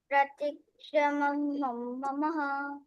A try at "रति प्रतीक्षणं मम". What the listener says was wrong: Very good.